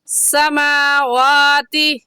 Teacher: समावाति में मीम के ऊपर खड़ी ज़बर है और वाव के ऊपर भी खड़ी ज़बर है और खड़ी ज़बर को एक अलिफ की मिकदार खींच कर पढ़ते हैं